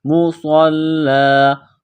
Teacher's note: صاد کو موٹا کرنا ہے، صاد میں سیٹی کی آواز پیدا کرنی ہے۔